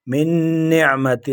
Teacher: من نون مشدد ہے، ایک الف کی مقدار اس میں ٹھہریں گے